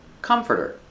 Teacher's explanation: Comforter. The stress is on the first syllable. It's three syllables.